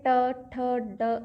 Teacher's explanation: जो साउंड है वो थोड़ी सी मतलब अग्र भाग से मुंह के अगले भाग से आती है साउंड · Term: मूर्धा